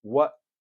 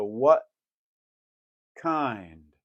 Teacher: most people will go what and stop it with a glottal and not even reach for the tea because they're getting ready to do a a k at the